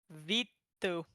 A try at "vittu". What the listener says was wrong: So you say the I faster. Vittu. But you gotta say Vittu.